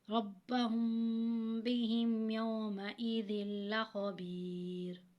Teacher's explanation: ان ربہم، اب میم ساکن کے بعد با آ رہا ہے تو یہاں پہ جو ہے وہ میم ساکن کے بعد با آ رہا ہے تو اخفا ہوگا، ٹھیک ہے، اور اخفا کی صورت میں غنہ کریں گے، اخفا شفوی ہوگا.